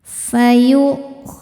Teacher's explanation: Walaupun ada wawunya yang dibaca adalah hamzahnya. Hamzah sukun ketika ditekan maka suaranya tertahan.